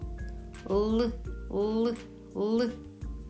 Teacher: Звук л вимовляється за допомогою кінчика язика, який зімкнувся з верхніми зубами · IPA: [л]